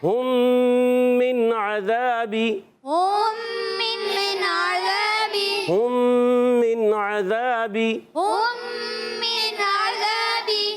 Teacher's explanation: ہم میم سائن کے قاعدوں میں سے ایک قاعدہ، میم سائن کے بعد دوسری میم آ گئی، ادغام شفوی کا قاعدہ